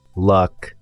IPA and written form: lʌk (luck)